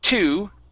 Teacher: when i say the the word to in in english my tongue comes back a little bit more it's curved upwards okay instead of laying against the top of my mouth like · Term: t sound